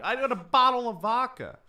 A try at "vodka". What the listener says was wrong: did sound like you said vodka with a B, though. bottle of vodka.